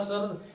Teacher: तो सर में तुम्हारी जीव क्या हो रही है कंपित हो रही है प्रंप हो रहा है उसम कंपन हो रहा है इसलिए इसे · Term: लुंठित व्यंजन, प्रकंपित व्यंजन